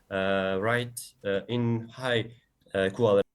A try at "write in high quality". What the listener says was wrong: Right, in high quality. So stress timing is off.